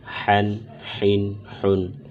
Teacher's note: حا حروف حلقیہ میں سے ہے، لہٰذا اس کو حلق سے ادا کریں گے اور حلق کے درمیانی حصے سے ادا کریں گے۔